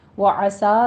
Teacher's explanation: وعسا میں عین وسط حلق سے ادا کریں گے ، سا پہ مد منفصل جائز ہوگی، 4 کاؤنٹ کرنا ہے،